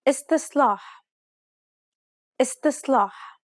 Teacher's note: The first S is pronounced dark despite what is written.